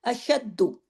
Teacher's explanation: दाल को सख्ती से क्योंकि डबल दाल है क्योंकि तशदीद बता रही है ना डबल दाल है अशद लेकिन